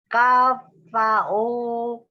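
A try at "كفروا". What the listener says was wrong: kafaru, Ru itu roma. gimana kamu itu?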